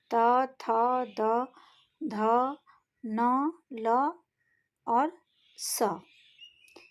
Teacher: केवल यह व्यंजन वर्ण ही दंत से उच्चारित होते हैं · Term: दंत व्यंजन